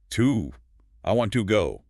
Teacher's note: With a long, rounded ooh sound, your lips are pushed forward. But in a sentence, before a consonant, it shrinks into a schwa. You don't push your lips forward at all.